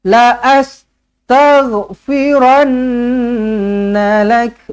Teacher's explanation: Nun sabdu wajibul gunna, dengungkan 2 harakat.